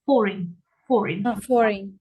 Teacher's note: this is money from another country foreign currency yeah pay attention we stress the first syllable